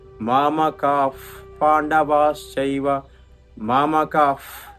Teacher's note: మామ కాహ్ హా శబ్దం రాదు, మామ కాఫ్ వస్తుందన్నమాట. ఆ గాలి ఉదే శబ్దం వస్తుంది. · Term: ఉపధ్మానీయము